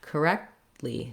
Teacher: both the K and the T are stopped correctly. So I just stop my tongue, don't let any air out until I get to the li syllable.